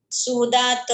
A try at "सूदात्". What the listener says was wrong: म्हणायचं, त हलंत आहे तिथं।